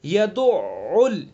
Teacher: عین کا مخرج ہے حلق کا بیچ، وسط حلق یعنی حلق کا درمیانی حصہ، اور اس کے اوپر تشدید بھی ہے، تو اس لیے دھیان سے، توجہ سے اس حرف کو ادا کریں گے۔